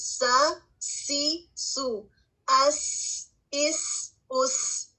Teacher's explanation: سین میں ہوا جاری رہتی ہے، آواز بھی جاری رہتی ہے · آپ کی سین کی سیٹی کی آواز آئے گی · سین میں ہمس پایا جاتا ہے